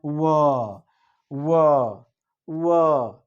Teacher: आगे दंत प्लस ओष्ठ, दंतोष्ठ को देखा जाए दंत प्लस ओष्ठ से क्या उच्चारित होता है, व दंत तथा ओष्ठ, दांत और ओठ होंठ दोनों से जो उच्चारित हो वो होता है व।